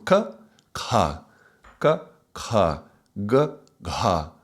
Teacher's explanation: the first line of the consonants, these are the guttural sounds, these are in the throat